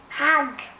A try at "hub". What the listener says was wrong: There's no G there.